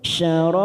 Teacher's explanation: Bi syasyarab, bi syasyarab masuk kata huruf shin yang bertasdid, syasyarab, syarab 4 harokat kita panjangkan, ujungnya kita pantulkan karena ada huruf ba qalqalah kubra